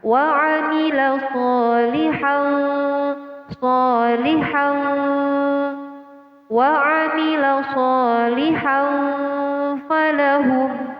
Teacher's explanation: Cara membacanya dengan samar, nun mati atau tanwin dibaca dengan samar. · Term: ikhfa